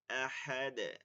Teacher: আহাদ ডালটা কলকলা করতে হবে